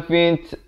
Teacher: ada bunyi angin itu, bunyi hamasnya